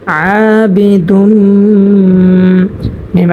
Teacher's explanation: মা ওয়ালা আনা আবিদুম মা এখানে তানবিনের বামে মিম আসার কারণে মিম হচ্ছে ইদগামে বাগুন্না হরফ এবং মিমের উপরে তাসদিদ হয়েছে সেজন্য এখানে আমরা গুন্নার সহিত পড়ব গুন্নার সহিত মিলাই পড়ব ইদগামে বাগুন্না হয়েছে দুম এখানে গুন্না করব আবিদুম মিম আলিফ জবর